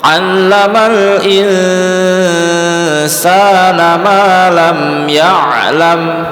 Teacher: Nun sukun bertemu sin pasti dengung.